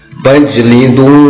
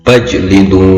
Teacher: fajlidu, qalqalah sughra, di mana pantulannya kecil, di mana ciri atau ciri khas qalqalah sughra itu adalah huruf ja yang sukun itu berada di tengah kalimat.